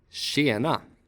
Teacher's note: The combination TJ sounds like /ɕ/.